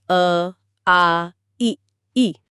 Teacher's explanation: अवृत्तमुखी वो हैं जहां होठ गोल नहीं होते बल्कि थोड़े फैल जाते हैं।